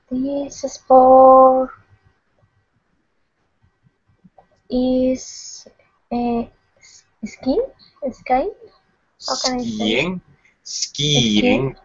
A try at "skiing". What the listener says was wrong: Yes, skiing. There's a little Y sound in there. Skiing. Skiing.